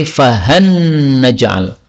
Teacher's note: Al, an, nah dekat ya, la, na, nah, maka boleh idgham menjadi fahan naj'al. Fahan, lamnya menjadi nun, namanya idgham. · Lam ketemu dengan nun. Ini menurut Imam Kisai boleh diidgham karena makhrajnya berdekatan. Al, an, nah dekat ya, la, na, nah, maka boleh idgham menjadi fahan naj'al.